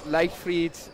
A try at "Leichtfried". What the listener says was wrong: almost perfect. You said Leichtfried. Leicht. Leicht. Where's the Eich? Give me the Eich. Eich.